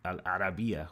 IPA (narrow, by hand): alʔarabiyya